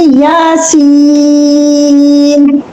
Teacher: پھر یاسین، یہ یا جو ہے، یا الف، یا الف حرف مدہ مد اصلی، اس کو 1 الف کے برابر لمبا کرنا ہے، اور یہ یا حرف مدہ اس سے پہلے کسرہ، تو یہ اس لیے حرف مدہ ہے، پھر نون پہ سکون، تو یہ مد لازم ہے، مد لازم، اور یہ مد اصلی۔